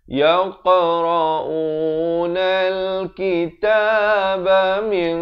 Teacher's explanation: ikhfa di sini dibacakan dengan tebal kerana qaf merupakan huruf isti'la.